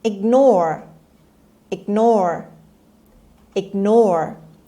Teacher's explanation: the stress is on the second syllable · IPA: /ɪɡˈnɔːr/